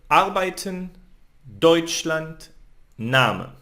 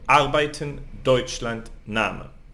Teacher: you see I lift my voice in the first syllable. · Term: word accent